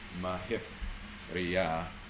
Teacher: mahi plus priya gives you mahip riya, hip then being closed and counting as a heavy syllable